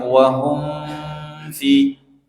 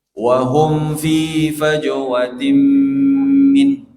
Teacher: Hum itu mim yang disukun bertemu fa. Mimnya dibaca idhar tanpa ada dengung, ya. Tanpa ada dengung ikhfa, maksudnya tanpa ada ikhfa, tidak disamarkan.